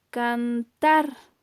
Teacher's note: la mayor intensidad de voz recae en la última sílaba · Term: acento prosódico